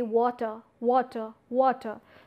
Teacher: had raah been realized I would have mentioned R but here R is not realized that's why I'm omitting R and just putting a sound making it water water water right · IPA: wɔtə